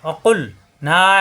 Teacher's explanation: কুল জিব্বার গোড়া থেকে